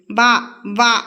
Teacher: కంఠ్యోష్ట్యాలు next వ ని దంతోష్ట్యం అంటారు అంటే దంతము మరియు ఓష్ట్యంతో పలుకుతాం మనం వ పలికేటప్పుడు మన పళ్ళు అంటే మన దంతాలు ఏవైతే ఉందో పై దంతం చూడండి కింద పెదవికి తగులుతుంది వ అంటాం సో వ ని దంత్యోష్టం అని అంటారు సో మోస్ట్ ఇంపార్టెంట్